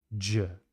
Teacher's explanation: If I add my voice to that exact same sound, I get the voiced sound J.